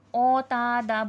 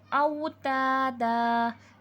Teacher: औ में वाव लीन का क़ायदा है, मजहूल करने से ओ तादा। बहुत सारे लोग जिनको तजवीद नहीं आता है वो औ की जगह ओ बोलते हैं, ओ तादा नहीं कहेंगे, औ तादा।